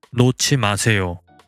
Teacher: Likewise, in the imperative sentence 놓지 마세요, meaning do not let go of something, hyut and 지읒 are merged into its aspirated pair, 치읒